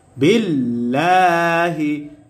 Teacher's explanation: আল্লাহ শব্দের লামের পূর্বে জের আসছে, এই কারণে আল্লাহ শব্দের লামকে বারিক করে পড়তে হবে, অর্থাৎ পাতলা করে পড়তে হবে।